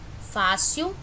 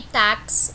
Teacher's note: essas daqui são paroxítonas porque a sílaba mais forte é a penúltima